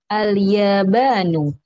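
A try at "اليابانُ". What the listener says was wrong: Ahsanti.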